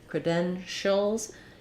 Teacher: It's just important that that first syllable is reduced and short, and then my length and stress falls on the den syllable. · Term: second syllable stress